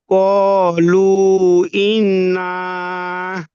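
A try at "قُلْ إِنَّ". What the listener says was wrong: না, টান হবে না, তাড়াতাড়ি পড়তে হবে। ইন্না, ইন্না।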